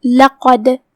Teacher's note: کلمت لقد میں یہاں حرف القاف ہے، ہم اسے بھاری آواز میں پڑھیں گے کیونکہ قاف حروف التفخیم میں سے ہے. پھر دال ہے اور اس پہ جزم ہے، یہاں حکم ہوا قلقلہ، لہذا دال کو ہلاتے ہوئے یہ کلمہ کو پڑھنا ہے